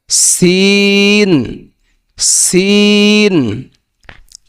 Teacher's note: সিনের মাখরাজ জিহ্বার আগা সামনে নিচের দুই দাঁতের আগা দিকে লাগাইয়া